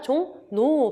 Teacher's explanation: 이응 뒤에서 리을은 뭐로 발음난다? 니은으로 발음난다. 비음화의 일종이에요. 그래서 종로가 아니라 종노 발음이 나고요.